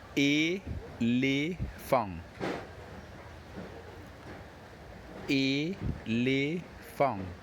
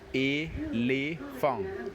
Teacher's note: But here, the only difference is that when pronouncing the word elephant in French, you don't pronounce the T at the end. And the 2 E's, which you see here, will be pronounced E-le.